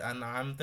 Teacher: এখানে আওয়াজ বলতে নুন মিমের আওয়াজটা হচ্ছে গুন্নার আওয়াজ নাকে থাকে এজন্য এখানে মিডিয়াম গুন্না ধরে রেখে এক আলিফ পরিপূর্ণ না